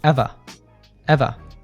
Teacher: in British English, they usually have a non-rhotic R. So ever sounds like eva, eva.